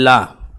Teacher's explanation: पार्श्विक व्यंजन, क्योंकि जब इसको ला को बोलते हैं ला तो जीभ जो है पीछे की ओर जाती है, ला पीछे वाले हिस्से को टच करती है, ला।